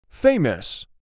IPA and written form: ˈfeɪməs (FAMOUS)